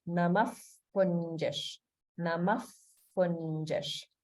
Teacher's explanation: we have visarga followed by a pa sound. So in this case, visarga gets pronounced like an if sound, like the English F sound.